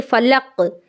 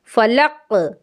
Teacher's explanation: قاف کی آواز لوٹ کر کے واپس آنی چاہیے۔ تشدید نہیں کرنا ہے، فلقہ نہیں کرنا ہے، فلق۔ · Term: قلقلہ